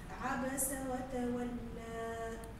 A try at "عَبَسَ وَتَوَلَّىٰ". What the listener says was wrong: حاول ما تميليش له. وتولى لا الألف الألف ما تميليش، ما تقولش تولى وتولى وتولى فتح.